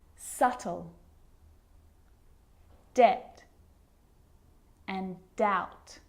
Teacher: my lips aren't closing and coming together to form the B sound I'm just pronouncing the T